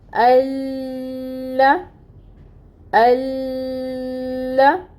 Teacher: اس کا مطلب ہوتا ہے کہ یہ حمزہ وصلی ہے، اس کے اوپر ہم خود سے زبر لگا دیں گے اور پھر ہم پڑھیں گے اس کو لام کے ساتھ ملا کر۔ لام کے اوپر فتح کی حرکت ہے جس کو ہم نے ایک حرکت ہی ادا کرنا ہے، اور جو تشدید ہے، تشدید ٹائم ٹیکنگ ہوگا